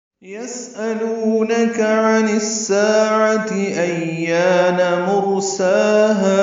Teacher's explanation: وہاں پہ یسألونک سین ساکن پہ ہمس ہے، یعنی سانس جاری رکھیں گے. حمزہ یا کی شکل میں ہے، جلدی پڑھیں گے.